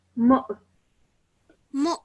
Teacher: meme with a dhamma, followed by a hamza with a sukoon on it. So when we join these two together, we produce a slight jerk sound.